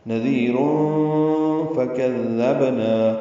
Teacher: کاف دال نرمی سے ادا کریں گے اور با ساکن پہ قلقلہ ہوگا